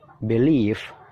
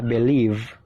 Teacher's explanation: Bedanya cuma suara terakhirnya yaitu F sama V. Kita awali lagi, believe, singkat ya, dan suaranya ringan, F-nya ringan, believe.